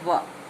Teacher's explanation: दंतोष्ठ से यानी दांत और होठों के मिलन से जो वर्ण बोले जाते हैं वो है व।